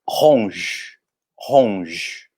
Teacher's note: já que o e não pronuncia no final